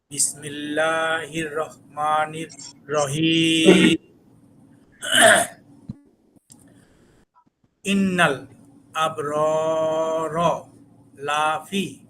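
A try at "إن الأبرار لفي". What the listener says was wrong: শুধু লাফি, এখানে লাটা একটু টান হয়ে গেল, এটুক যাতে না হয়। লাফি, লাফি। ইন্না একটু গুণা করবেন বেশি। ইন্নাল।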